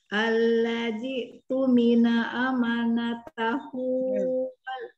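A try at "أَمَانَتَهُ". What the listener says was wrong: Amanya panjangin dulu. Ama.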